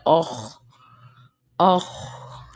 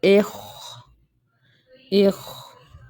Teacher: موٹا لیٹر ہوتا ہے اور یہ حلق کے پہلے پارٹ سے نکلتا ہے، مطلب زبان کے سب سے جو قریب ترین پارٹ ہوتا ہے وہاں سے نکلتا ہے